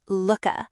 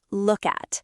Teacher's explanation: The phrase look at often becomes looka with a quick k sound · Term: reduced form